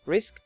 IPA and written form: rɪskt (risked)